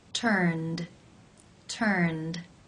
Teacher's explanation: The final sound in the infinitive is the n consonant sound, n, which is voiced. Therefore, it is case 2, where the ed is pronounced as the d sound.